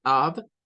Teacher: no se pronuncia con letra f verdad sino que se pronuncia como con una letra V